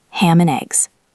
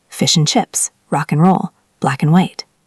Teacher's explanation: and is almost always just n in spoken English. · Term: ghost word